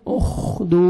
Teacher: उखदू, वाव मद्दा है, दाल को 1 सेकंड खींचना है और लास्ट में दाल साकिन कलकला करेंगे, उखदूद, खा को अच्छी